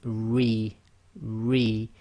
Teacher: the Ra can sometimes be tafkhim and sometimes tarqiq. So with kasra, it's tarqiq, i.e. it's light sound. · The letter Ra with kasra behaves as a light letter. Make sure you smile while saying the Ra with kasra.